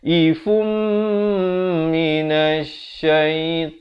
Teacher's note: daripada ifun jadi fum, terus masuk ke mim ini dan didengungkan 2 harakat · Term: idgham bi gunnah